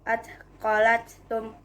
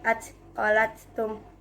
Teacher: huruf ta pertama dileburkan ke huruf ta kedua menjadi atqalatum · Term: idgham mutamatsilin